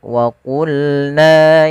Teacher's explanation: pangkal lidah kita harus kita angkat sehingga terdengar suara qanya menebal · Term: isti'da